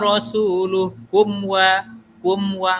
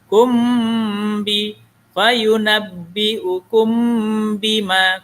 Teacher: Itu disebut dengan ikhfa syafawi. Ikhfa syafawi ini dia ada dengung, dibaca dengung.